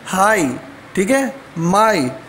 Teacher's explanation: दो वावल्स जो है ना आपस में मिले हैं, तो ये जो है ना एक आवाज़ बनी है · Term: डिफ्थोंग्स